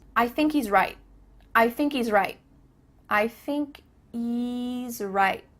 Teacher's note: There's no H happening here. I thinky. Thinky.